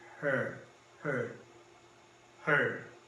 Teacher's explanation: Que quando você pronuncia, você tem que dobrar sua linguazinha lá pro céu da boca e pronunciar bem forte. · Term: chuazinho